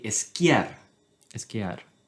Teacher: any Spanish speaker is going to add an e in the beginning of any s word.